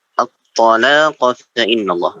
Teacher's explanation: lamnya jangan terlalu panjang, Pak.